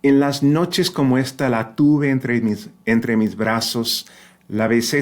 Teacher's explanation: it is a fricative or approximant, right, bilabial. The lips are coming, almost touching. The air is just squeaking through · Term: softer B